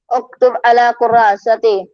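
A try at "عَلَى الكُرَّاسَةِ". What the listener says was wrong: अलल कुर्रासती, अला क्यों, अल लाम भी है ना, अल कुर्रासती। रहा है, अला अला क्यों कह रहा है, अलल है, अलल है, नजर नहीं आ रहा।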